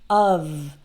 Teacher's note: in the word of, spelled with only one F, the F is actually pronounced like V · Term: V sound